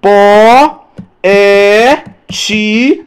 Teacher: Duas vogais que estavam juntas, mas pertencem à sílabas diferentes. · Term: iato